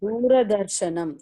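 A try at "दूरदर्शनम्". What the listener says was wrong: not repa, not rakara. You should not say rakara. Rakara is wrong. Repa is pure consonant, pure letter, semi-vowel letter. It is ra. Ra is repa plus a. So you have to correct this. So you have the problem of cutting the vowel.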